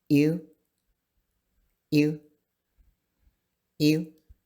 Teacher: And this letter is different. It's not a sound that's heard very often in English, and it's somewhere between the I sound and the U sound. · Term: I with the slash